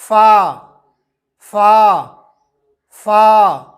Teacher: سامنے والے اوپر کے دانتوں کے کنارے کو نچلے ہونٹ کے گیلے حصے پر لگا کر نرم اور باریک آواز میں